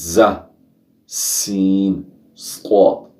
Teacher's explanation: इन 3 हरूफ को सीटी की आवाज़ से अदा करते हैं